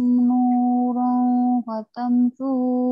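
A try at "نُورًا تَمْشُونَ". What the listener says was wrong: Enggak ada patamsu, nurang tamsu, enggak ada fa-nya. Dilebih-lebihin. Kalau gaji dilebihin boleh, kalau ini jangan.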